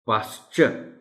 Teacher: پاسچر، یہاں بھی آر almost silent ہے